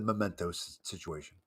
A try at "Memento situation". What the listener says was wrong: It's not mementos. you added a see, it's the power of adding. But much like the E on Thorn and Throne, it's very powerful when that S gets added to mementos, because all of a sudden, do-ah!